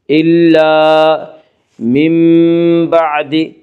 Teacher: الا من بعد، من بعد میں قلب ہوگا، اس کا قاعدہ ہے کہ نون ساکن یا تنوین کے بعد اگر با آئے تو نون تو قلب ہوگا، یعنی نون ساکن اور تنوین کو میم سے بدل کر غنہ کے ساتھ پڑھیں گے